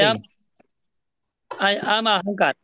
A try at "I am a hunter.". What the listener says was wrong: হাঙ্কার না, হান্টার, হান্টার। HUNTER, হান্টার। হ্যাঁ, হান্টার।